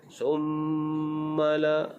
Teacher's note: Summa la, di sini dibaca dengan dengung